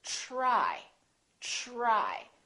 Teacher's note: We say try, try. So the TR together make this sound almost like a CHR, almost like ch, but it's a softer one. It's ch, try, try.